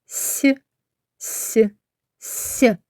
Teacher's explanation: повітря зустрічає при вимові перешкоду у вигляді піднятого до верхніх зубів язика та зубів Отже звук с приголосний а саме М'який приголосний позначаємо його фішкою